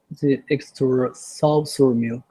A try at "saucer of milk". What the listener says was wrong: I think it's the of that you're not saying clearly enough. Saucer of milk. Saucer of milk.